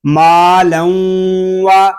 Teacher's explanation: یہاں تنوین میں ادغام یر معلوم ہو رہا ہے، لام کو ہم واو کے ساتھ ملا کر پڑھیں گے. یہاں ادغام یر معلوم اس لیے ہو رہا ہے کہ تنوین کے بعد حروف یر معلوم میں سے واو آ گیا ہے اور اس کو ہم غننے کے ساتھ پڑھیں گے.